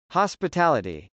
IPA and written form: h.ɑspətˈæləti (hospitality)